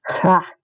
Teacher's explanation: the G in Dutch is like this consonant sound, and it's like the Scottish CH or the German CH, but the G in Dutch is actually voiced. So you want to voice that G in Dutch.